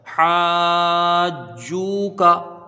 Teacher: حرف مد کے بعد جیم میں یہاں پر تشدید سکون لازم ہے، یہاں مد لازم ہوگا جس کی مقدار 3 الف 5 الف ہے